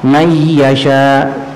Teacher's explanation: nunnya kada dibaca lagi sudah. Karena masuk ke huruf ya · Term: idgham